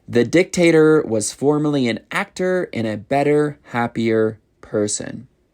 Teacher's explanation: you really want to pronounce the eer at the ends of the words if you want to have an American accent. · So, we really pronounce that R sound in American English.